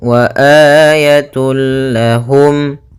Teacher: idgham Bil gunah yaitu huruf lam di sini maka cara membacanya masukkan tanwinnya kepada huruf lam tanpa ditahan gunah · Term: Idgham bila ghunah, idgham bila gunnah